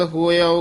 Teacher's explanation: ਹੋਇਉ ਉਚਾਰਨ ਕਰਨਾ ਹੋਇਓ ਨਹੀਂ ਕਹਿਣਾ